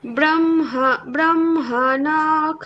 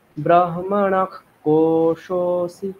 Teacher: বিসর্গের পরে ক থাকলে বিসর্গটাকে খ বলতে হবে ব্রাহ্ম ব্রাহ্মণাখ না খ টা ওরকম খ নয় খয় হলন্ত টাইপের